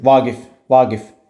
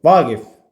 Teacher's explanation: Ancaq xitab kimi işlədikdə vurğu bircə əvvələ gələ bilir.